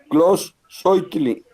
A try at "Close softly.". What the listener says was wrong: Softly, suénale un poquito más la F antes de la T.